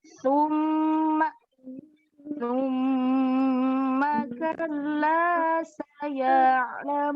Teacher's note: Di sini sa-nya bukan sa ya, tapi sa yang digigit lidahnya juga seperti zal dan zo.